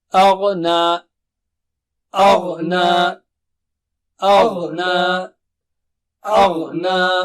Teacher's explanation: اغنا، دیکھیے اغنا نہیں پڑھنا ہے، اغ اغ، آ باریک ہے اور غا موٹا اور اونچا ہے